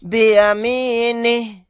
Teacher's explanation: آیت کرنے کی صورت میں ہا کو ساکن بنا دیں گے